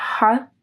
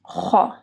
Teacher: ح جو ہے وہ گلے کے درمیانی حصے سے ادا ہوتا ہے اور خ جو ہے وہ اوپر کے حصے سے، ٹھیک ہے، جو ہمارا اپر تھروٹ ہوتا ہے۔